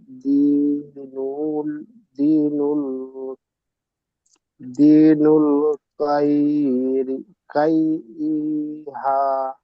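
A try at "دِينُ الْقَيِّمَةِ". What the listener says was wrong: কাইয়িমাহ, ওটা মিম, ওটা হা নয়। দিনুল কাইয়িমাহ।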